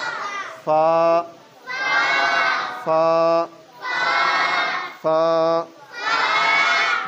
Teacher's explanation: ऊपर वाले दांतों की नोक नीचे वाले होंठ के अंदर वाले हिस्से के साथ मिलाएंगे तो फा अदा होगा